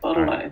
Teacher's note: I don't even pronounce the T. Bottle-o. Bottolo.